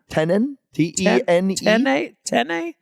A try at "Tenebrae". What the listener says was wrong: Tenebrae. There's no N in the middle. There's like you're adding an N. The way you're saying it is Tenenbrae. Tenebrae. Tenebrae. Tenebrae.